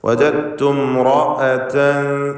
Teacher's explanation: റാഇന് പൂർണ്ണമായ തഫ്ഖീം കൊടുക്കണം, തടിപ്പിച്ച് പറയണം.